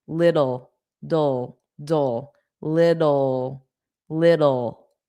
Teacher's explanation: We will put soft D's there and say little. I say little generally with a D.